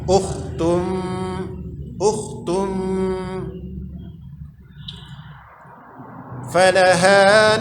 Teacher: Jadi sudah pada posisi makhraj huruf fa, gigi atas dan bibir bawah. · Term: ikhfa